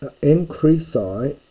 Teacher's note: the nasal becomes a guttural nasal before the chi